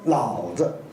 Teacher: 这个轻声轻轻的一读，那么就说老子，是这样读